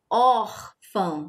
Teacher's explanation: O acento agudo, ele deixa o som da vogal mais aberto, um som mais aberto.